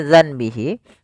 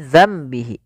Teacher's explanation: suara nunnya kita ganti dan dibalikkan menjadi suara mim awalnya dananbihi menjadi dambihi karena di sini ditandai dengan mim warna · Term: iqlab